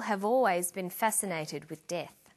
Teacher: we link the final consonant sound v with the initial vowel sound or. Have always.